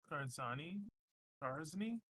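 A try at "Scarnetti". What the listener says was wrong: The Z is silent. It's Scarny.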